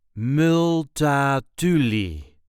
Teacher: There is a light emphasis on the third syllable.